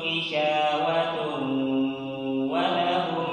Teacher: Ada tanwin bertemu dengan waw, itu adalah idgham bi gunnah. Maka dari itu kita harus tahan ya, ditahan kemudian didengungkan.